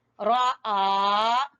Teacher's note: रा को छोटा, आ को खींचना है